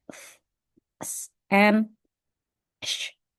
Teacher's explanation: next one is fricative. It's narrowing open, create friction, such as when you say f, s, and sh.